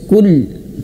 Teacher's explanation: Jadi kul jangan sampai terputus suaranya ketika dia sukun. Kul kul tidak, tapi mengalir sedikit.